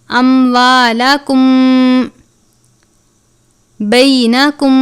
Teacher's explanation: میم ساکن کے بعد اگر حرف با آ جائے تو اخفاء شفوی کا قاعدہ لگتا ہے، یعنی غنہ کر کے پڑھیں گے